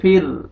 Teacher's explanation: فا کسرہ را سکون فر، دیکھیں را ساکن لیکن کسرہ آ رہا ہے، را کو باریک کر کے پڑھیں گے